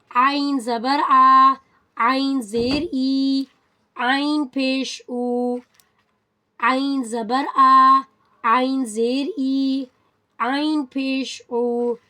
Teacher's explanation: عین جو ہے حلق کے درمیانی حصے سے ادا ہوتا ہے، from the middle of the throat